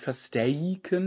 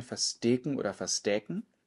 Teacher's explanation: Nicht versteiken mit Diphthong, sondern versteken oder verstäken mit einem einfachen E oder Ä